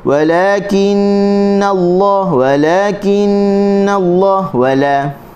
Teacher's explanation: Lam hujung tepi dia dah letak di gusi.